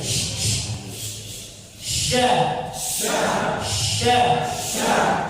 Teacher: Jadi ketika makhrajnya itu bertemu karena ada nggak terlalu rapat, agak sedikit renggang, ada angin atau suara yang mengalir dari makhrajnya menekan di sela-sela gigi. Jadi suara udaranya menyebar, udaranya menyebar ke sela-sela gigi. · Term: tafashi